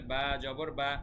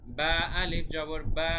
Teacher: তো আমরা বলছি বা জবর দিলে শুধু নর্মালি হয় বা, আর বায়ের সাথে যখন একটা আলিফ থাকবে, খালি আলিফ, মানে জবরের সাথে যখন একটা খালি আলিফও এক্সট্রা থাকবে তখন এক আলিফ টান হবে।